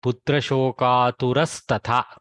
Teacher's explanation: So the visarga has changed to sakara.